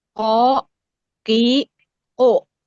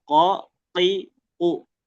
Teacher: Kalau kof, nah dia pangkal lidah menyentuh bagian lunak atau bagian yang lembut. Makanya dia terdengar ko, ti, u.